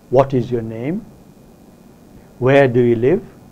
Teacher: with asking WS questions with the falling tone it's just that if you ask them with the rising tone then it expresses your concern your warmth your closeness with the speaker